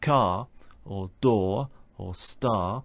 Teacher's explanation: these all end with a letter r but we don't pronounce that letter